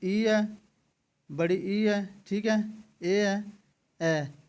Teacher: तो जीभ के आधार पर आपके स्वरों को तीन भागों में बांटा गया है। अग्र स्वर जिनमें जीभ का अगला भाग कार्य करता है